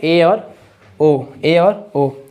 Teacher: अर्ध संवृत स्वर जिनका उच्चारण करने में हमारा मुख द्वार जो होता है आधा खुला होता है